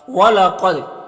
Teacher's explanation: وَلَقَدْ قاف حروف مستعلیہ میں سے پر پڑھیں گے، دا حروف قلقلہ میں سے ہے، اور دال کے اوپر جزم ہے، تو دال میں قلقلہ ہوگا